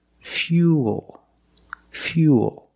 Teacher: so it's U plus the dark L Fuel not few o remember when you link the U plus the dark L the mouth opens a little bit but it's not a real syllable